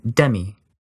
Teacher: in the English word, demi, the very tip of your tongue hits the alveolar ridge, that ridge right behind your upper front teeth, d.